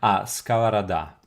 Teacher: stress is on the last syllable